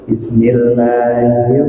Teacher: Keluar angin dari tenggorokan. Tempatnya hak adalah di tengah tenggorokan. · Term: sifat hamas